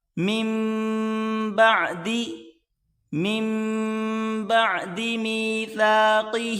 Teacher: یہ آپس میں ملا کر پڑھیں گے، یہ بیچ میں نون نہیں پڑھا جائے گا